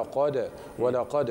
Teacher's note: ثم الدال القلقله المتوسطه لانها ساكنه في الوصل والوقف